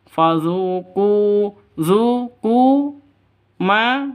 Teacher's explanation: sama-sama panjang dua ketukan ya Kenapa sama-sama Mad asli atau Mad thi'i